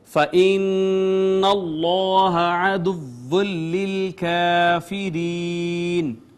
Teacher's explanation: نون مشدد پہ ہم نے غنہ کیا